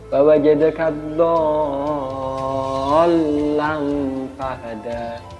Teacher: Lamnya itu tasdid, jadi harus terdengar tasdid, harus ditekan.